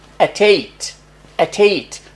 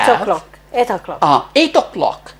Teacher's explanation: we link the consonant t with the vowel